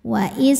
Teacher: cara bacanya tanwin dileburkan ke wau disertai dengung